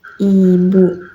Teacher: lidah berada di depan dan tinggi mendekati langit-langit mulut, mulut dibuka sempit, tidak lebar, bibir sedikit menyamping seperti tersenyum ringan, suara yang keluar adalah jernih, tajam, dan tidak berubah menjadi bunyi lain. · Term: vokal I